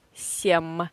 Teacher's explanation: If V stands in front of any not voiced consonants, like S, it is not voiced, we pronounce V in this position as F. Совсем. Yeah, so V is voiced consonant, F is not voiced consonant.